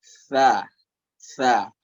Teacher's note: makhraj huruf fa adalah punggung ujung lidah ketemu sama gigi seri atas.